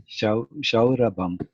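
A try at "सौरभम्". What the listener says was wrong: Saurabam, not Shau. Saurabam.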